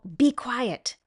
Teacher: speaking in a sharp, angry whisper